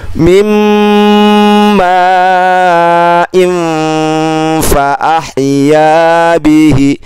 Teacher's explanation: tanwin bertemu dengan huruf fa, maka bunyi fa-nya yang 50% kita gabung ke n-nya · maka tanwin bertemu fa dibaca dengung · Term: ikhfa